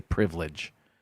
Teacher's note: I say privilege. 2 syllables. I don't pronounce that second I.